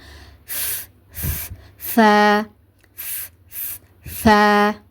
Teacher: ஸோ வச்சு லேசாக காற்றை வெளிப்படுத்தி உச்சரிங்க. ஓகேவா, ஃபஸ்ட்டு காற்றோட சவுண்டு வரணும், அதுக்கப்புறமாடி தான் அந்த எழுத்தோட சவுண்டு வரணும்.